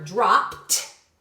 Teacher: it sounds like it ends with a T